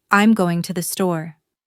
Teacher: We stress store because it's the important part of the message. I'm not going to the bank or the park. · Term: word stress